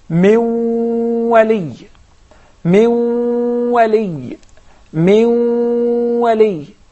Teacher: The ghunna to haraka measures 1 second, and idgham, we put or we merge the noon into the waw.